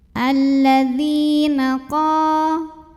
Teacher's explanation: Maka cara bacanya zal yang berharokat kasrah ini kita panjangkan dua harokat saja. Alladzina qa di sini ada mad tabi'i karena ada alif yang didahului baris fathah.